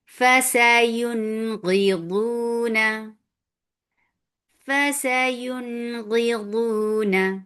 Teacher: اور اظہار کا کیا مطلب ہے کہ ہم نون ساکن کی آواز کو کلیئر کر کے پڑھ دیں گے